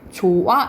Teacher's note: 이거는 형식 형태소를 의미하는 거죠 의미가 없는 조사나 어미가 왔을 때는 어미나 접미사가 있을 때는 히읗을 발음하지 않는데 말 그대로 히읗 탈락 현상이 일어난다라고 보시면 돼요